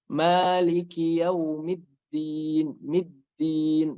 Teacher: harus ada penekanan sedikit supaya jelas dal di sini di Maliki Yaumiddin ini ada dua, bertasydid maksudnya.